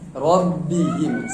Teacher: Kemudian ra-nya tafkhim ya, tebal. Ya, karena berbaris fathah.